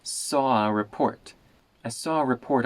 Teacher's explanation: it almost sounds like I'm making the vowel in Saw particularly long